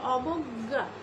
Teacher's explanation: এই যে গটা আমরা যেভাবে উচ্চারণ করি গা, শেষের গটা কেমন একটু নাকের মধ্যে বাজে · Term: নাসিক্য ধ্বনি